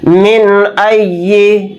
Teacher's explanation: یہاں پر نون کی آواز کو ظاہر کر کے بلا غنہ کے جلد پڑھیں گے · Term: اظہار حلقی